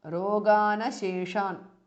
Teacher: because rogan ends in n and asheshan starts with a, it becomes roganasheshan.